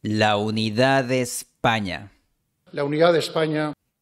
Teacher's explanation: También la A de la ha formado diptongo con la U de unidad. El producto es el diptongo AU, como en la palabra out en inglés de Estados Unidos. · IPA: [aw]